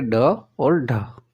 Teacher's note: मूर्धन्य व्यंजन हो जाएंगे आपके ड और ढ